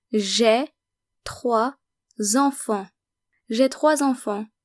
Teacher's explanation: And notice again that we're making the liaison between 3 and enfant because enfant starts with a vowel